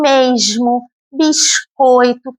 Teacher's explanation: Isso acontece quando o S está no final da sílaba. E aí, ao invés de um som parecido com o S, ele se aproxima muito mais do X. Por isso, as pessoas falam mesmo, biscoito, parece que tem um X ao invés do S. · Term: som chiado